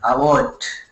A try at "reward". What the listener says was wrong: You got an award. Is that what you said? You got an award? What's the last word you're saying there? Because it sounds like award. Like award or reward for, okay.